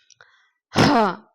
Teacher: அதே புள்ளி மேல வந்துச்சுன்னா ஹா எப்படி ஹா அப்படின்னு ஒரு சிங்கம் ஏதாச்சு வருங்களா எப்படி நம்ம தொண்டைகல இருந்து ஒரு இழுத்து வரும் அது மாதிரி ஹ அப்படின்னு நம்ம சொல்லணும்